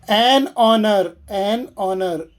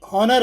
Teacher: ಎಚ್ ಉಚ್ಚಾರಣೆ ಇಲ್ಲ ಅದರ ನಂತರ ವಾವಲ್ ಸೌಂಡ್ ಬರುತ್ತದೆ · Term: ಎಚ್ ಸೈಲೆಂಟ್